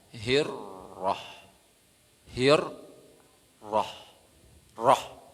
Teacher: ra ini dia ini tebal. Dibaca orang tipis.